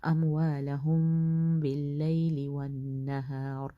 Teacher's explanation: الذین ینفقون اموالہم باللیل والنہار، میم ہے، میم کے بعد با آ رہا ہے تو یہاں پہ اخفا شفوی ہوگا، تو غنہ کریں گے تھوڑا سا